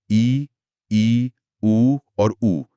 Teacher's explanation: संवृत जिसका मतलब है मुंह का लगभग बंद रहना।